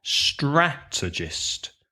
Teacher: quite difficult to to pronounce stressing the first syllable right so a strategist also three syllables stress the first syllable